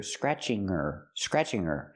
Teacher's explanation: her is not a stressed word, so we don't pronounce the h.